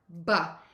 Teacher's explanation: Lips pressed together, then open up. Air puffs out. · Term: b sound